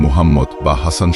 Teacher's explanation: কণ্ঠনালীর মাঝখান থেকে বাতাস চেপে হলক থেকে উচ্চারণ করতে হয়, যেমন মুহাম্মদ বা হাসান শব্দের হ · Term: বড় হা